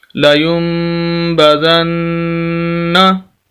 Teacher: दो जगह पर हम गुन्ना करेंगे और नून को सख्त करके पढ़ेंगे